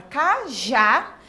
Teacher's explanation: a palavra cajá ela termina em a e a última sílaba é a tônica então é uma oxítona terminada em A então ela tem acento